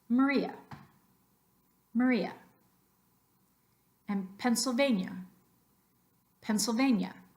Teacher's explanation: accented they're not given a little extra oomph with your breath our tendency as English speakers is to pronounce those vowels like the sound ah